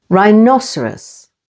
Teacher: rhinoceros with the stress on the second syllable